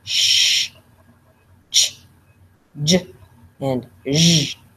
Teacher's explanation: made by the front of the tongue or the blade of the tongue that touches somewhere between the alveolar ridge and the hard palate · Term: alveolopalatal sound